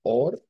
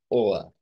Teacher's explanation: esa r que se convierte en una vocal de a a centralizada o a media